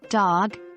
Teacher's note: You'll notice a vibration in your vocal cords when you pronounce it. The D sound, as in dog, is also voiced. It's similar to B, but produced with the tongue pressing against the upper teeth and palate, rather than with both lips.